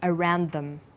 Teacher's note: around is stressed but them is unstressed